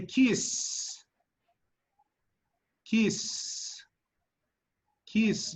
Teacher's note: there's no vibrations it's only air it's called aspirin that's called voiceless or unvoiced okay kiss voiced · Now touch again, and they say kiss, kiss, kiss. You see the vibrations in the S? No, and there's no vibrations. It's only air. It's called aspiring.